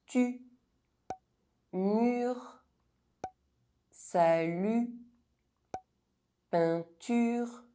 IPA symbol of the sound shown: y